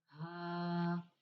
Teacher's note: حلق کے نیچے والے حصے سے